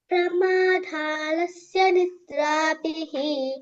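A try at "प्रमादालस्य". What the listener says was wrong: మళ్ళీ ధాలస్య అంటున్నావు ప్రమాద ఆలస్య ప్రమాదాలస్య అక్కడ ధాకు పొక్కిలేదు ప్రమాదాలస్య నిద్రాభిః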